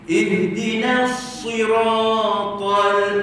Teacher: Jadi na tetap na. Ihdinas, masuk sad baru tebal.